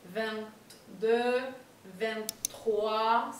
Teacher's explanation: la T final se va a pasar a pronunciar, pero también un poco más suave